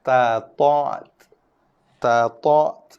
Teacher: Keluar bunyi angin sikit je apabila kita lafazkan huruf ta tu. Selepas tekanan, kita tekan dulu hujung lidah belakang gigi, lepaskan tekanan berserta dengan keluar sedikit hembusan nafas.